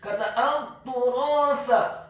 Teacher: huruf ta-nya dibaca tipis, tarqiq ditasydidkan, ditekankan, dhammah 1 harokat. Huruf ra-nya dibaca tafkhim tebal, fathah 2 harokat karena setelahnya ada huruf alif.